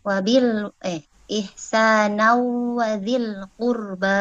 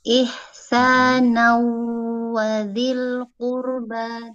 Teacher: Dileburkan dengan ditambah dengan suara gunnah. Gunnah yang minimal 2 harokat itu ya Ustaz. Gunnah yang dipanjangkan. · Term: idgham bi gunnah